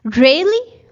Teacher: if I say really with a rising tone, it would show surprise